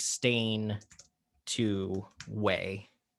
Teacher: You're losing the N sound on the end. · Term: subtractive